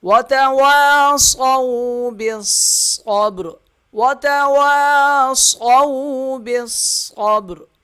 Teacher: با جو ہے صاد کے ساتھ سختی کے ساتھ ملے گا، صاد کے اوپر تشدید ہے، ذرا رک کر ادا کریں گے، با پہ آگے قلقلہ ہوگا، وقف کی صورت میں را کو موٹا پڑھیں گے۔